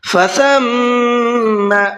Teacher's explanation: میم پر تشدید ہے تو یہاں پر غنہ کریں گے